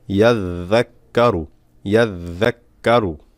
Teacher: জাল পাতলা হবে জিহ্বার আগা দিয়ে